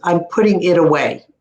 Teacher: We say it away, make it like a D. That's how you do it.